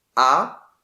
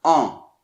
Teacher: la langue va un petit peu vers l'arrière, on baisse le voile du palais pour laisser passer un peu plus l'air par le nez, mais surtout, comme toujours, rappelez-vous, le son se fait plus dans cette partie. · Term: le son en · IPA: ɑ̃